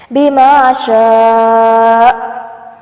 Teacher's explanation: وقف کی صورت میں حمزہ ساکن ہوگا تو جھٹکا محسوس ہوگا اور آواز کو بند کر لیں